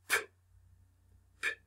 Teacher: you are stopping the sound and the air, and releasing it all at once.